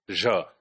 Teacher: the j sound is also post-alveolar, voiced fricative